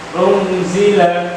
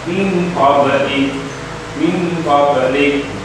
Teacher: Artinya samar. Artinya nunnya disamarkan. Nun sukun ini disamarkan. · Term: Ikhfa